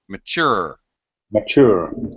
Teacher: just a note about pronunciation mature it's second syllable stress